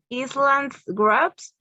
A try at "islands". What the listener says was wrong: Islands. The S is silent. S is silent. Island. There are lots of words in English that have silent letters.